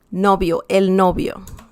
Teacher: the V sound in Spanish is just as the sound B, as in bell in English